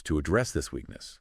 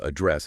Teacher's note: Notice that verb address again stressed on the second syllable here meaning to deal with or tackle a problem.